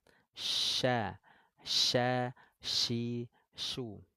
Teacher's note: sifat attafasyi itu artinya menyebarnya angin di dalam mulut kuat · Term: huruf syin